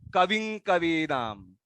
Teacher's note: मकार का म का उच्चार न करते हुए कविं कवीनाम